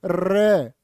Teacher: र बोलो र जीभ कांप जाएगी तुम्हारी। र को प्रकंपित भी बोलते हैं और लुंठित भी कहते हैं। · प्रकंपित होता रे, बोलो रे, जीभ कांप जाएगी तुम्हारी।